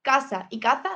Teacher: La mayoría de los hablantes americanos no distinguen entre la S y la Z. Casa y caza suenan igual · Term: ceseo